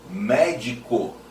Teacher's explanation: são aqueles que têm como sílaba tônica a terceira de trás pra frente antepenúltimo